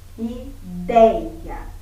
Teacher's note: Ideia, paroxítona, a palavra mais forte é o dei